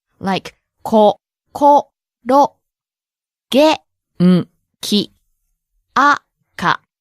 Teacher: And please also notice that each syllable has the same length.